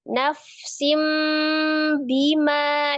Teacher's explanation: Nun sukun atau tanwin yang bertemu dengan huruf ba, hukumnya adalah iklab. Merubah nun sukun menjadi bunyi mim sukun ya. Dari nafsin menjadi nafsim disertai dengan gunnah.